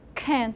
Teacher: at the beginning of the word it has to be aspirated so it's the aspiration and then you have the end can